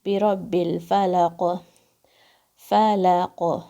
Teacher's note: قاف پہ قلقلہ اور بھاری ساؤنڈ ہے